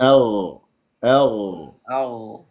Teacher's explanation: الغين والخاء من مخرج واحد لكن يختلفون في الصفات الغين لا يجري فيها النفس فقط الصوت